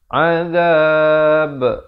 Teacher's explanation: Za di hujung lidah